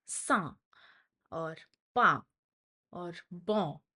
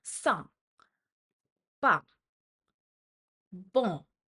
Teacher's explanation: So you have your nasal sounds, through which, your nasal sounds are basically where you are putting out the letter through your the air is simultaneously coming out through your mouth as well as your nose.